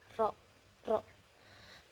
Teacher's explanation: ujung lidah terus bergetar gitu. Kemudian ee cara keluarnya itu mutawasir tengah-tengah.